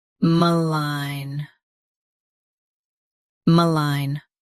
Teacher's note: Stress line. Keep ma soft and quick.